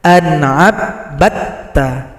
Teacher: Berikutnya pada ayat ke-22, di sini ada dal yang sukun jumpa dengan ta, idgham mutajanisain. Dal tidak dibaca lagi karena telah gabung pada huruf ta.